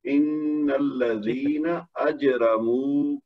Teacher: اجرمو میں جیم جو ساکن تھی اس کا ہم نے وہ کرنا ہے کلکلہ صغریٰ, کیونکہ وہ کتب جد میں سے ہے. · بس یہ ہے کہ آخر میں جو ہے نا وہ رکنے کی صورت میں مد عارض ہو جائے گا. جو واو کا مد ہے نا یضحکون میں, تو اگر ہم رکیں گے تو پھر اس کو لمبی مد کر دیں گے